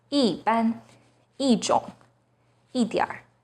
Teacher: When 一 is followed by a non-4th tone, it becomes the 4th tone